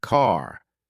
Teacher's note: American accent often uses a strong R sound. Words like car sound like car.